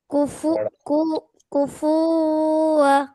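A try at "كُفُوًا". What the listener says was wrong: কুফু টান হয়ে যাচ্ছে আবারও। হ্যাঁ, কুফুয়া, কুফুয়া, এরকম।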